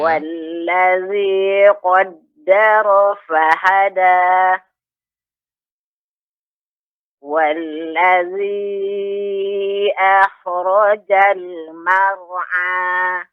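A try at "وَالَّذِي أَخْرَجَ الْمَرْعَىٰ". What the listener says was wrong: Kha ketika dia disukunkan, ini termasuk huruf isti'la sehingga harus ada juga isti'la'nya, sifat isti'la'nya tebal. Wallazi akhrajal ya, demikian. Sedikit tadi koreksinya untuk kha ya. Ini termasuk huruf isti'la. Jadi akhrajal wa ma yakhfa.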